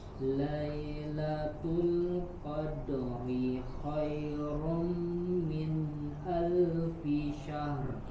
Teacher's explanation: jelas huruf dal, pantulkan dan tipis